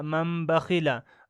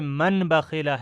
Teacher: ان دونوں جگہ با کو میم سے بدل دیا ہے اور اس کو غنہ اور اخفا کے ساتھ پڑھا گیا ہے، تو اسی کو اقلاب کہتے ہیں۔